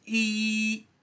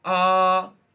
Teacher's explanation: In number one, instead of taking a look at the tongue, we will look at the jaw. So first we could have a closed mouth, a closed jaw, like E, down to an open jaw, like ah, E, ah. So close, E, open, ah.